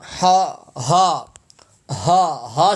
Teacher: ہا سینے سے ادا ہوگا